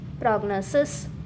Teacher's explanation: The I in the final syllable is like the I in sit, sip, sick. The main stress is on the second syllable.